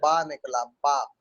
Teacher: नीचे लिप्स और ऊपर लिप्स टकराया तो बा निकला, बा। ये प्लेसमेंट ऑफ साउंड है। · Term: बाइलिबियल साउंड